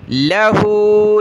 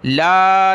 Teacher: लाम को खींचना नहीं है, ला नहीं पढ़ना, इस पर ज़बर है।